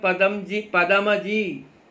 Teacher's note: हिंदी भाषी तो शब्द के अंत में स्थित ह्रस्व अ अगर है बोलते ही नहीं है। आपका नाम है पदम जी, पदम जी, पदम कोई नहीं बोलता है, पदम।